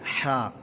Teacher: حلق کے درمیان والے حصے سے ہا ادا ہوتا ہے۔ عین ہا کا جو مخرج ہے حلق کے درمیان سے ہے، تو ہا جب ادا کریں گے تو حلق کے درمیان میں آپ کے زور پڑے گا اور ہا ادا ہوگا۔